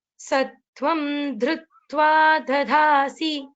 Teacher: the first da is Alpa Prana, second da is Mahaprana.